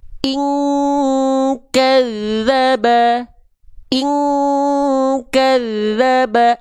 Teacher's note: kalau huruf kaf kan berarti dengungannya dia mendekati eng alias kuat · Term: ikhfa